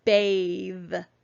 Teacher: letters come together to make one sound and in this word digraph th is going to be making its voiced sound